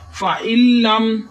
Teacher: حمزہ کے نیچے زیر ہے، ای بغیر کھینچے پڑھیں گے، لیکن نون ساکن ہے۔ نون ساکن ہے اس لیے ہم نون کو ختم کر دیں گے، کیونکہ شد آ رہی آگے، شد والا حرف 2 دفعہ پڑھا جاتا ہے۔